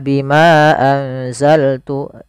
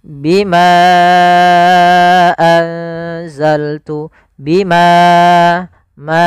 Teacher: Contoh di sini bima satu kata, anzaltu satu kata. Maka bimanya kita panjangkan sepanjang 4 harokat. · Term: mad jaiz munfasil